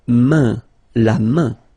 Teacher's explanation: this combination A-I-N is quite interesting because it will give you the sound un, so it's really a nasal, it goes in your nose